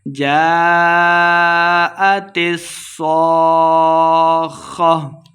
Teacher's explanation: سواد کو خا کے ساتھ ملا کے پڑھیں گے اور لمبا بھی کرنا ہے اس کو اور آخر پہ ہم نے وقف کر دینا ہے.